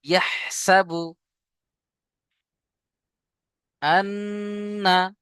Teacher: নুনের উপরে তাসদীদ, গুন্না করা ওয়াজিব।